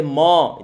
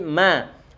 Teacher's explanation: wa dia tipis, ma juga tipis, nggak boleh mo, itu tebal kalau mo, tapi ma.